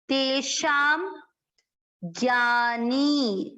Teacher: नी की मात्रा बड़ी, लंबा खींचेंगे